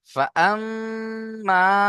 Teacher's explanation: মিমকে প্রথমে এক আলিফ গুন্না করতে হবে তারপর এক আলিফ টান দিতে হবে